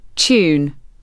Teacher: Words like tune, duty, and new have a Y sound before the vowel.